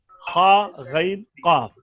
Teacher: अगर ज़बान की जड़ को उठाएंगे तो 1 गुना तफखीम होगी, और अगर ज़बान के दरमियान को भी उठाएंगे साथ जड़ के तो 2 गुना तफखीम हो जाएगी। 3 हरफ में सिर्फ ज़बान की जड़ ऊपर तालु की तरफ उठती है, वो है खा, गैन और काफ।